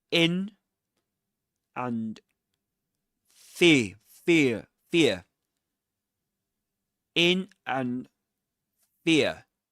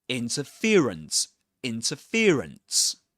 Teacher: it's double stressed, which means there are two stresses or accents in the word. And they are in which can be indicated like this.